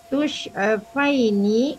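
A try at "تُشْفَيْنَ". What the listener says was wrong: Tushfaina. Ina bukan ini. Ina.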